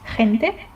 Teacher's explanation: it's kind of like trying to pronounce H if you have a flu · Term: flu H